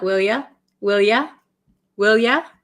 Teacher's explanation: So will ya, this you becomes ya. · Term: American pronunciation